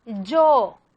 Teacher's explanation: En el dialecto castellano, la I representa una palatal fricativa africada.